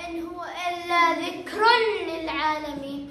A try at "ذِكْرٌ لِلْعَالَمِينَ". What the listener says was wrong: ما قلت ذكر، لا ذكر للعالمين.